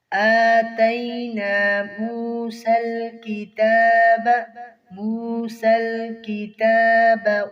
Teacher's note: کھڑی زبر کو ایک الف کے برابر کھینچیں گے۔ آتَيْنَا مُوسَى الْكِتَابَ والفرقان، قاف کو موٹا کریں گے۔